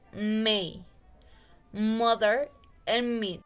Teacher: The sound is called the bilabial nasal, which means that you use both your lips and the air comes from your nose. To produce the sound, close your lips and voice out through your nose.